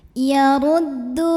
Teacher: Ra dibunyikan secara tafkhim karena ra-nya berbaris dhammah, maka bacanya tebal, pangkal lidah diangkat.